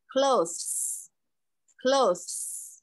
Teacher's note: 这个▁th▁在这里是发的是轻音，不是浊音，是轻音